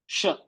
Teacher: स ये स जो है ये जबान की नोक नीचे की दांत में लगती है। स और ये श जबान के बीच से निकलता है। श और ये स ये इसका और इसका मखरा सेम है।